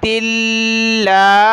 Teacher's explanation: اب لام کو ہم نے نون کے ساتھ ملانا ہے، نون کو سین کے ساتھ، لام نون پیش لن، نون سین زیر نس، ما بال النس، واو زبر و، نسوہ، تا کو لام کے ساتھ ملانا ہے، تا لام زیر تل، لام کھڑا زبر لا، تلا، تا یا زیر تی، بال النسوة اللاتی، لام کے اوپر کھڑا زبر ہے تو ایک الف کی مقدار میں کھینچنا ہے